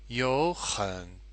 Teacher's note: two third tones we've got yo and we've got han and we turn the yo the first third tone into a second tone